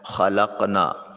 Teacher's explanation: زبان کی جڑ جو ہے وہ حلق کے کوے کے ساتھ ملے تو اس وقت یہ قاف ادا ہوتا ہے۔ نا میں نون کو لام کے ساتھ ملاتے ہوئے اس کو حرف مد کے طور پر نہیں ادا کریں گے۔